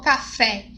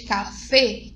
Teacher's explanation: uma pronúncia diferente já falou café em vez de KC que é um e fechadinho